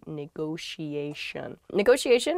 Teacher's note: there are two t's in this but neither t is a hard t they're both very soft that sh sound because they're followed by the i and another vowel that she